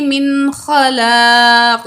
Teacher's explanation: نون کو ہم ظاہر کر کے پڑھیں گے